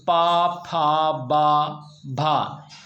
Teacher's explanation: तो पा फ बा भा इन वर्णों को बोलने के लिए होठ एक दूसरे को स्पर्श कर रहे हैं इसी तरह विद्यार्थियों इन्हें स्पर्श व्यंजन कहा जाता है